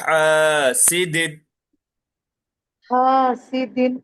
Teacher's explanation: हा हलक के दरमियान हिस्से से